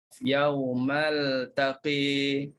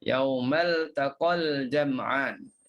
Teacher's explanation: Jadi yang baca tadi sengaja berhenti pada yaumal taqa untuk tunjukkan di situ ada bacaan imalah. Kalau kita yaumal taqi imalah, dan kalau kita sambung maka hilanglah imalah tersebut.